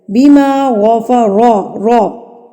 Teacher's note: غائن بھی پور پڑا جائے گا یہاں پر، اور را کے اوپر اگر زبر آ جائے، را کے اوپر اگر زبر آ جائے تو را کو بھی پور پڑا جاتا ہے